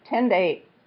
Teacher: It doesn't sound like a T, it sounds like more like a D, known as a flap.